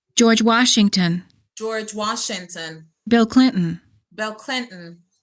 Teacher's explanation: Names of places and people. Stress the last word.